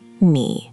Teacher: The pitch goes down and then back up. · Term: tone three